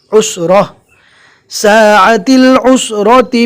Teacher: رکنے کی حالت میں جزم والی ہا بنا کر پڑھنا ہے